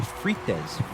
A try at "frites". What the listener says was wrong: Well, it's in French, it's more of a throaty sound, like